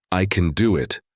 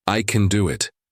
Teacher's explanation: I can do it. Flat, robotic. I can do it. Natural, confident, rising tone.